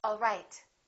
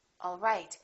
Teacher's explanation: one is falling intonation and one is rising intonation